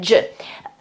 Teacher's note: Well, not really, because your tongue is actually closer to the upper side of your mouth, and it's a bit more forward than a normal J